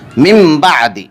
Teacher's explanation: من بعد، اس میں ایک قاعدہ اقلاب ہو رہا ہے کیونکہ نون ساکن کے بعد با آ رہا ہے، اس لیے نون ساکن کو میم ساکن سے بدل کر غنہ اور اخفا کے ساتھ پڑھیں گے۔